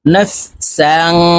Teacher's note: وإذ قتلتم نون فا زبر نف সিন আলিফ দুই জবর সাং তানউইনের পরে ইকফার হরফা আসছে তাই এই সিনকে নাকের ভিতরে লুকাইয়া গুন্নার সহিত পড়ব